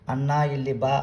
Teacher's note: ಮಾತ್ರ ಇದು ಮೂರು ಮಾತ್ರ ರಸ್ವ ದೀರ್ಘ ಪ್ಲುತ ಇದು ಒಂದು ಉದಾಹರಣೆ ಅಥವಾ ಅಣ್ಣ ಇಲ್ಲಿ ಬಾ ಅನ್ನುವಾಗ ಅಣ್ಣ ಅನ್ನುವಂತದ್ದು ಪ್ಲುತ ಸ್ವರ